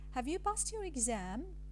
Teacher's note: you draw an arrow from a mid to a very high level for exam because it is a yes-no, ordinary yes-no question